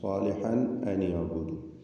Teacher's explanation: സാലിഹൻ എന്ന അതിലെ തൻവീനിനെ ഇൽഹാർ ഹൽഖി നൽകി മണിക്കാതെ വെളിവാക്കണം.